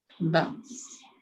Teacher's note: Masuk hamzah dulu baru masuk huruf sin.